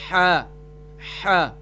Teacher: اس میں سے تیسرا حرف جو ہمارا آ رہا ہے آیت کے اندر وہ ہے حا۔ حا کا مخرج ہے یعنی کہ گلے کے درمیان والے حصے سے ادا ہوگا